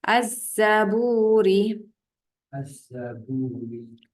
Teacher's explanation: ada bunyi Zai tak ada bunyi lam sebab lam tu tak ada tanda